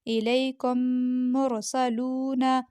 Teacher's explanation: یہاں پہ میم پہ جزم ہے اور اگلے میم پر تشدید ہے تو ہم نے کاف پیش کو میم مشدد سے ملایا، میم مجزوم سے نہیں ملایا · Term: ادغام